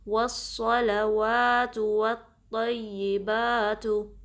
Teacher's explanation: सौद के साथ लाम को हैवी नहीं पढ़ना, लाम बारीक रहेगा